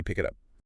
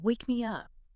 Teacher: Feel that stress on the last word. · the short words like it and me do not have any vocal stress · The heavy energy of the phrase naturally lands on that little particle, the word up.